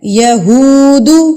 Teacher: اس وجہ سے ہم یہاں پر اس کو نہیں کھینچیں گے. ہم صرف ہو کو کھینچیں گے کیونکہ ہا پیش ہو کے بعد کیا ہے واو ساکن, اور واو ساکن سے پہلے اگر پیش آ جاتی ہے تو وہ واو مدہ کہلاتا ہے جس کو ہم نے ایک حرکت کے برابر کھینچنا ہوتا ہے.